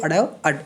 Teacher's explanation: इनका जो उच्चारण है वो जीभ एकदम से ऊपर हमारे तालू को टच करेगी बिल्कुल ऊपर अ बिल्कुल सेंटर में और और फिर झटके के साथ नीचे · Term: ताड़न जात